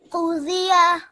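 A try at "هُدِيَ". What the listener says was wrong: What we don't want to hear the Z sound. So Hudiya. The. Can you hear? I'm making it the sound rather than the Z sound. Hudiya.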